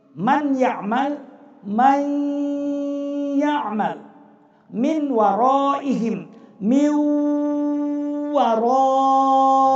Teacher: Sekali lagi, yang dileburkan adalah makhrajnya, bunyi nun mati tanwin, tetapi sifat gunnah itu tetap yang dibaca, sehingga meleburlah nun mati tanwin dengan suara berdengung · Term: idgham bi gunnah